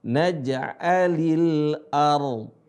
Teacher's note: Ketika ada ra sukun, sebelumnya ada fathah, maka dibaca tebal ra-nya.